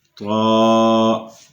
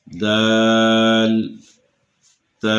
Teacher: طا اسے پر کر کے پڑھنا ہے اور باقی 2 حروف کو باریک کر کے پڑھنا ہے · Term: حروف نطعیہ